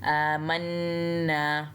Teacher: नून को भी एक अलिफ जितना लंबा खींचना है, क्योंकि इसके साइड पे अलिफ और उसके ऊपर फिर से कोई हरकत नहीं है, आमन्ना।